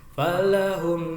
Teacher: mim mati bertemu alif ini namanya izhar safawi. Mimnya agak mingkem. Falahum, jangan lupa haknya ha besar ya, bukan ha kecil.